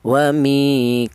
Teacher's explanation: dibaca panjang yaitu satu alif atau dua harakat atau dua ketukan